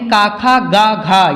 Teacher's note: ये सब के सब उच्चारित होते हैं कंठ से